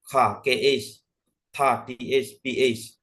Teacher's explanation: these aspirated sounds are produced with a strong burst of air